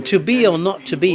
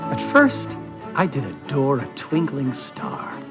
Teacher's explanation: collectively known as rising meters because a pattern moves from unstressed to stressed